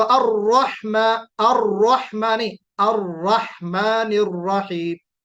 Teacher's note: الرحمن الرحیم کہتے وقت الرحمن الرحیم، را کو پر کرنا ہے نا، موٹا پڑھنا ہے